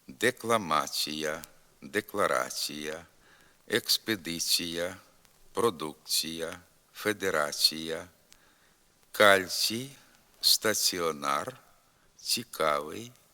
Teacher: приголосний ц завжди м'якшиться перед голосним і